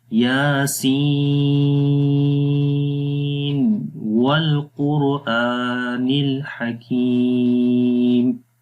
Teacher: اس کو پھر ایسے ہی پڑھیں گے، یاسین والقرآن الحکیم، یعنی یہاں پر نون ظاہر ہوگا، تظہر النون، نون کو ظاہر کیا جائے گا، یاسین، آخر میں نون کی آواز کلیئر آئے گی، ظاہر ہوگی، اور پھر واو پڑھیں گے